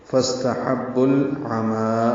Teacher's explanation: عین وسط حلق سے ادا ہوگا، میم کو 2 حرکات لمبا کریں گے.